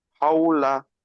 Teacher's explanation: ওয়াউলিন নরম আওয়াজে তাড়াতাড়ি পড়তে হয়, টান দেয়া নিষেধ। লামের উপরে জবর এসছে, জবরটি হলো হরকত, হরকতকে তাড়াতাড়ি পড়তে হয়, টান দেয়া নিষেধ।